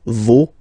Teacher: even if you've got this final s, you don't pronounce it, as it was the case already for this word, no, you don't pronounce the final s.